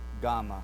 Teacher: our tongue is pressed against that soft palate in the back of our throat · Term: guttural